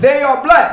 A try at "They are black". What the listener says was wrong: You gotta say black. You gotta put some emphasis on it. Black.